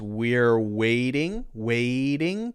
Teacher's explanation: a voiced sound so this is continuous we're waiting waiting because T is pronounced as a D in this specific case so this would be all voiced